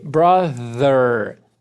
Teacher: Th voziado de novo. Não é um D.